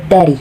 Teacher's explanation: T the Arabic letter T is similar with English letter T it is pronounced on the tip of the tongue